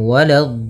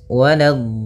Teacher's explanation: Hati-hati di sini walado. Lanya jangan sampai tebal. Jangan walad tapi lanya tipis.